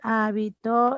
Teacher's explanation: el acento está en la antepenúltima sílaba esdrújula